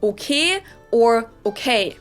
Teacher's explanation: pronounce your vowels more like just one letter just one sound straighter